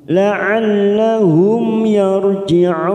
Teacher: huruf mim sukun bertemu ya namanya izhar syafawi kita baca jelas tanpa mendengung